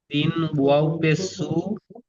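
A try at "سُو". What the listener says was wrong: জি, আর একটু টান দিন। সিন ও পে সু। ওটা মাদের চিহ্ন, উপরে যে একটা শুয়ে আছে তাই না, ওই ব্যাঙ মতো যেটা শুয়ে আছে, এটা মাদের চিহ্ন।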